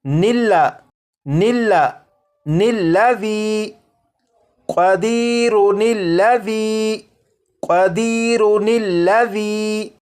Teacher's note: یہ جو الف اور اس کے اوپر جو زبر ہے یعنی یہ جو حمزہ ہے اسے نہیں پڑھیں گے، بلکہ نون کو لام کے ساتھ ملا کر پڑھیں گے ، اور یہ پڑھا جائے گا نلا نلا نلذی قدیرن الذی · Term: نون قطنی